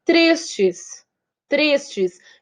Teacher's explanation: Então o tris é minha sílaba tônica, por isso que eu conto até ele.